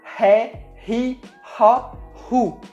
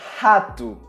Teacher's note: É um som que a gente faz com a garganta. É o mesmo som da letra H em inglês ou da letra J em espanhol. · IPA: /ʁ/